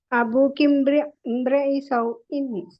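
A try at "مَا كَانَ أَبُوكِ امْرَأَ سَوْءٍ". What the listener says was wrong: ഇമ്രി എന്നായ റായിന് എങ്ങനെ കസർ വന്നു? ഇമ്രി എന്നിങ്ങനെ വന്നു. മാ കാന അബൂക്കി ഇംറഅ സൗഇൻ. കേട്ടോ, കാനയുടെ രണ്ടാം പാർട്ടാണ്. കാനയുടെ സെക്കൻഡ് പാർട്ട് ഇംറഅ. അപ്പൊ മാ കാന അബൂക്കി ഇംറഅ സൗഇൻ. ഇവിടെ ലികുല്ലി ഇംരിഇൻ.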